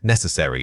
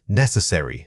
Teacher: Focus on that initial n sound and make sure it carries the strongest beat of the entire word.